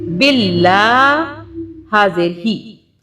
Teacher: اللہ کی آواز کو ہم باریک اس لیے پڑھ رہے ہیں اور باریک پڑھیں گے کیونکہ اللہ سے پہلے یہ با کے نیچے زیر آ رہا ہے